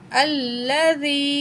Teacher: हमज़ा ज़बर लाम, लाम ज़बर ला, दाल को नरमी से पढ़ेंगे और ज़ा को सख्ती के साथ पढ़ा जाता है। या साकिन है, उससे पहले ज़ेर है, या मद है, यहाँ 1 पॉइंट हम खींच के पढ़ेंगे।